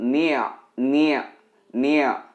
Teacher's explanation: Ni bertemu ain mati, harus ada bunyi ain yang disukun.